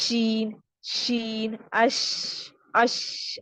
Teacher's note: آواز پوری منہ میں پھیل جاتی ہے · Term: حروف تفشی